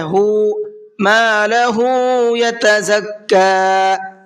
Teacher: ہا کو کھینچ کر کے پڑھنا ہے